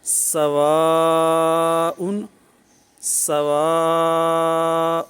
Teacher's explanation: چونکہ یہ اب مد الحمزہ بن چکی ہے اور مد متصل بن چکی ہے، اب اس کو کم سے کم 2 الف دراز کریں گے